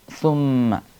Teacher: സാഹ് നാം ഉച്ചരിക്കുമ്പോൾ നാവിൻറെ അറ്റം പല്ലിൻറെ പുറത്തേക്ക് കുറച്ചു വരണം സുമ്മ അതുപോലെ രണ്ടാമത്തെ അക്ഷരമാണ് സുമ്മ ശദ്ദുള്ള മീം ആണ് അതുകൊണ്ടുതന്നെ അവിടെ നന്നായിട്ട്